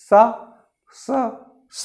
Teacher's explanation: बोल के देखिए, स बोलते हैं तब ये दांत, दोनों ऊपर नीचे के दांत के बीच से हवा रगड़ खाते हुए निकलता है, तब ये इसका उच्चारण होता है। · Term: दांत वाला